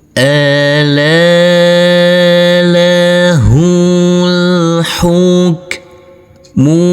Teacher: Huruf alifnya ini kita anggap tidak ada. Jadi huruf H kita baca pendek bukan kita baca panjang tapi dibaca pendek